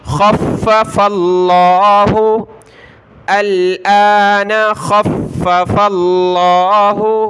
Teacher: دیکھیں یہاں یہ لفظ اللہ ہے، فا کو لفظ اللہ کے ساتھ ملایا تو لفظ اللہ سے پہلے فا پر زبر ہے تو ہم نے یہاں لفظ اللہ کو موٹا کر کے پڑھنا ہے